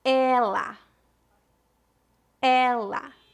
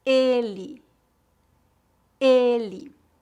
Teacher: ela com e aberto e ele com e fechado